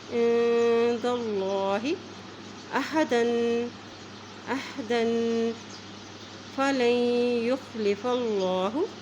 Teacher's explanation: اللہ کے نام سے پہلے دال کے پاس زبر ہے عند اللہ تو اللہ کا نام موٹا ادا کیا جائے گا